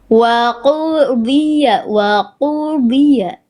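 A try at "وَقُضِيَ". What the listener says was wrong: Bunda melafalkan dengan penuh keraguan ini kayaknya. Bunda, tebalkan dotnya Bunda. Angkat pangkal lidahnya Bunda. Wa qudiya. Wa qudiya. Kita pancing dulu huruf dotnya. Di. Oke, lidah dalamnya naik. Angkat, dorong ke dalam. Di. Wa qudiya.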